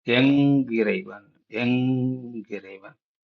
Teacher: இங்கு நகரம் இரட்டித்து வந்துள்ளதை பார்க்கலாம் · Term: ஒற்றளபடை